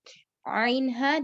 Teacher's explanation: درمیانی حصے سے یعنی مڈ تھروٹ سے نکلنے والے حرف وسط الحلق